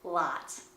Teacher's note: the short vowel O has a slightly different placement in American English and sometimes is completely different depending on the word.